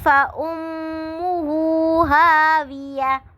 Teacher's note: فَأُمُّ میم مشدد ہے، تو یہاں پہ غنہ ہوگا، آواز کو تھوڑی دیر کے لیے ناک میں ٹھہرانا ہے. ہاویہ، ہا پہ الف مدہ ہو رہا ہے، ہاویہ، اور تا کو ہم نے جو ہے ہا میں بدل دینا ہے وقف کی صورت میں.